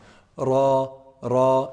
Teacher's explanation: rah is actually pronounced from the top part of the tip of the tongue